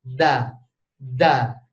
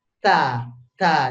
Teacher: Ta ini bukan ditolak aja tapi ta ditiup